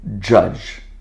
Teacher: the plosive D and the fricative ZH, and the sound is J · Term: affricate